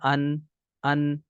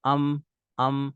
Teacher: बगैर इख्तियार के भी जो है इनमें हल्का सा गुन्ना जो है वो पाया जाता है